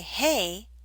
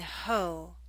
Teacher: it's the oh and ho that makes the back of your tongue high